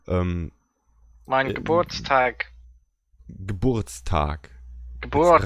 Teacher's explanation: roll the R with the back of your tongue